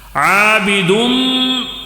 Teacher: تنوین کے بعد میم آیا ہے تو ادغام ہوگا، ادغام، ادغام غنے کے ساتھ ہوگا